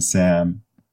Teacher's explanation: that's a voiceless alveolar fricative and then M which is the same except that it's voiced